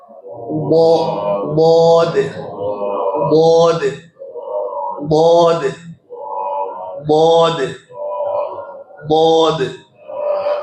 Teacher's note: एक तरफ की जबान के किनारे को ले लीजिए, ये जो साइड है, और उसको बिल्कुल उसके ऊपर, ऊपर वाले जो दाढ़ हैं उनकी जड़ से लगाइए।